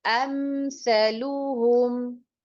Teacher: میم ساکن ہو اور اس کے بعد اگر میم اور با کے علاوہ کوئی بھی لفظ آ جائے اس کے اوپر آپ اظہار کریں گے، یعنی کہ میم کے اوپر کوئی غنہ آپ نہیں کریں گے. تو یہاں پر سا ہے تو ہم میم کو بغیر غنے سے پڑھیں گے.